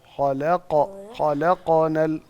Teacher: آپ قلقلے کو نا پیش کی طرف نہ لے کے جائیں. خلقو نہ ہو.